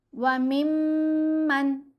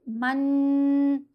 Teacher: اب یہ جو نون ہے اس کے اوپر ہم نے غنہ نہیں کرنا، اظہار کرتے ہوئے نون کی آواز کو جلدی پڑھا جائے گا اور ظاہر کر کے پڑھا جائے گا. اگر کوئی پڑھے من تو یہ غلط ہے کیونکہ غنہ ہو رہا ہے، اظہار میں غنہ نہیں کرنا